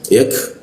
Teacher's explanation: huruf ya bertemu K dimatikan di siku tenggorokan. Lidahnya diturunkan sehingga ada hembusan udaranya. Jadi K mati itu ada hembusan udaranya.